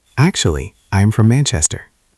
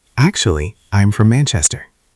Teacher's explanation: It goes up a little bit on actually and then down.